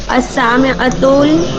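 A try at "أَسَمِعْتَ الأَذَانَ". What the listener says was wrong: ना ना आ अलग है। आ समिअतल अज़ाना।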